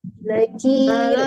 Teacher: tipiskan kafnya dan tipiskan juga rnya